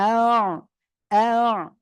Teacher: হামজা আইন জবর আ, আ, গলাটা চেপে পড়তে হবে